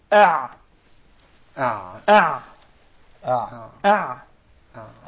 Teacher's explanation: The عين along with the حا or the حا come from the middle of the throat.